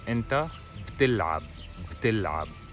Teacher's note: we do not pronounce the b fully. We kind of merge it with the letter after, which is t in this case.